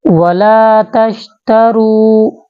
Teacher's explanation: را کو ہم موٹا کر کے پڑھیں گے